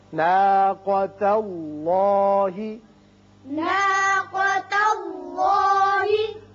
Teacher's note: ناقة الله. ناقہ نہیں پڑھیں گے، ناقا قاف کو پر پڑھتے ہیں